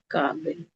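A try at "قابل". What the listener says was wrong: हाँ, पढ़ी दिया आपने।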